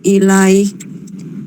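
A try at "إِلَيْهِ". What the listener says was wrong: ilaihi panjang.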